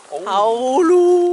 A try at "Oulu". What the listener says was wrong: Non, pas A, c'est un O. Oulu. Voilà, Oulu.